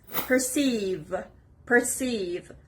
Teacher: The stress is on the second syllable, perceive.